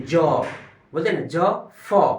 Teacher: फिर से रिपीट कर रहा हूं ज और फ होता है इन व्यंजनों के उच्चारण में शवास मुख अवयवों से रगड़ खाते हुए बाहर निकलती है जो मुह से निकलती है रगड़ करर तो उसको हम लोग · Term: संघर्षी व्यंजन